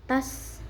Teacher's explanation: punya sifat hamas, ada angin keluar, ada sofir, ada desisannya, terus dia juga huruf tebal. Tas naik pangkal lidahnya.